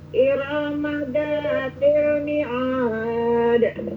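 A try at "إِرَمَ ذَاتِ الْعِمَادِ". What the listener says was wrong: Berarti ulangin imad, jangan mi'ad.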